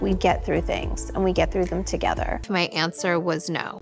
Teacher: a low, creaky kind of voice, which is used at the end of sentences by young American females of a certain type, and which is widely considered irritating and even dangerous. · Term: vocal fry